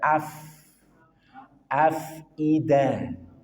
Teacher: ada fa yang punya sifat hams maka alerkan udara